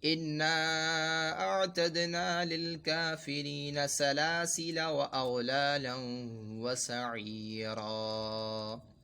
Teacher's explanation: لام کو کھینچا نہیں، یعنی زائد الف میں نے نہیں پڑھا